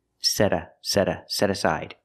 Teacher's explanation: you hear the T change to a fast D